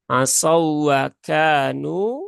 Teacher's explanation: Huruf waw mati bertemu dengan waw. Nah, itu namanya idgham mutamasilain ya. Idgham mutamasilain, dan di sini tidak boleh digunahkan.